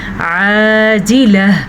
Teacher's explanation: تا جو ہے وقف کی صورت میں گول ہا بن جاتی ہے